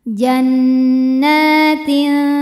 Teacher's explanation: hukum ikhfa aqrab karena ada tanwin kasrah menghadapi huruf ta maka tanwinnya dibunyikan samar-samar siap-siap menuju ta disertai bunyi dengung